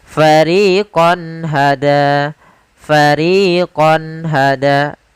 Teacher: suara qonnya harus jelas tidak boleh ditahan dengan gunna · menampakkan suara nun sukun dan tanwin dengan jelas tanpa disertai gunnah. Fariqon hada, fariqon hada, jelas. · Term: izhar halqi, izhar